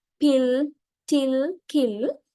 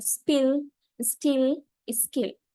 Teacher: They each have an aspirated form which occurs at the beginning of a word, as in pill, till, kill, and unaspirated form after s, as in spill, still, skill, like way.